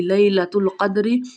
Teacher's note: دال پہ کلکلا ہو رہا ہے